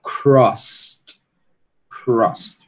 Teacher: Você tem que fazer a aspiração do k, né? Depois você tem que realizar o st.